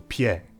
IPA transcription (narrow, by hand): pi͡ɛ